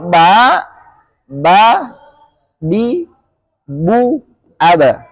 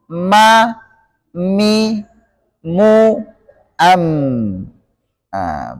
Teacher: Sedangkan huruf ba dan mim hanya dengan merapatkan kedua bibir tanpa memoncongkannya atau tanpa membuatnya manyun ke depan.